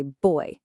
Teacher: In English, when we say a word like boy, we let out a little puff of air. Try it. Put your hand in front of your mouth and say boy.